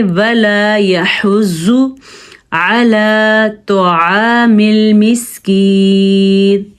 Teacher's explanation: या को खींच के पढ़ेंगे क्योंकि या साकिन है और उससे पहले ज़ेर है। जब या साकिन हो और उससे पहले ज़ेर हो तो वो या मद्दा होती है।